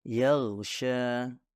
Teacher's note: suara ghain tidak dihasilkan dengan mendorong udara atau menghembuskan nafas, melainkan dihasilkan dengan menggetarkan pita suara yang dapat Anda rasakan ketika Anda menyentuh tenggorokan dengan tangan Anda saat mengucapkan huruf ghain tersebut. · akar lidah hampir menyentuh langit-langit lunak, tapi tidak bersentuhan sepenuhnya. Karena suara ghain adalah suara kontinu atau terus-menerus, yang artinya bisa dipanjangkan selama yang kamu mau.